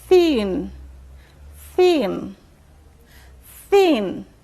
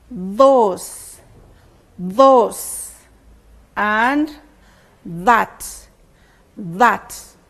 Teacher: lips then two other examples are those those and that that the initial sounds in each of these words is said when the tongue comes in between the upper teeth and the lower teeth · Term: inter dentals